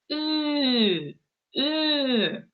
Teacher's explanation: То есть она такая, похожа на у, но она более мягкая. То есть когда вы ее говорите, у вас прям губы в трубочку сворачиваются. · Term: звук Ü